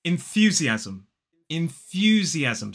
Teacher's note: five syllables stress falls on the second and notice that that final M that m is an M